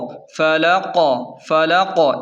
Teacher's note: آخری حرف قاف پر قلقلہ ہوگا، ساکن بھی ہوگا اور قلقلہ ہوگا، یعنی آواز جھٹکے کے ساتھ پلٹے گی، جیسے برب الفلق، قل اعوذ برب الفلق، فلق فلق، اس طرح جھٹکا دینا ہے۔